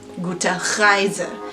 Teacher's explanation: the word for Reise, trip or voyage, is basically going to have that R that's in the back of the throat